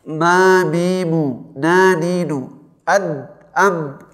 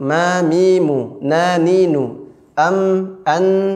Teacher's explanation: Selain mim dan nun termasuk huruf ain, nggak boleh masuk ke rongga hidung bunyi huruf suaranya. Jadi ketika mengucapkan mim dan nun, pasti bunyi suaranya akan masuk rongga hidung secara otomatis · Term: sifat dengung